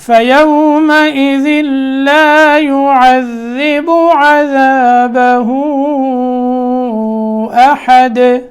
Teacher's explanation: عذابه پہ مت اور آخر میں احد، دال میں قلقلہ وقف کیا نا، احدن پہ وقف کیا تو دال ساکن ہوا اور سکون کی وجہ سے اس میں قلقلے کی آواز آئے گی